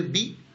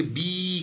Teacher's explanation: اسی طرح سے یا نے کیا کیا, بے زیر بی, جب اس میں یا لگایا تو کھینچ کے بی کر دیا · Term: یا مدہ